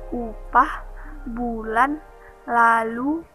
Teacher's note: Fonem U adalah vokal atas belakang bulat. Vokal ini dibentuk dengan kedua bibir agak maju ke depan dan agak membundar, serta belakang lidah agak meninggi.